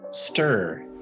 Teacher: We skip the I in stir almost completely. And so we go straight from the T sound straight to the R. So our tongue is up here at the T right behind our front teeth.